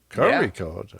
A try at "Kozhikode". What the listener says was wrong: Cori code. Yeah, it's not an R. It's like a deep guttural sound. Cori code.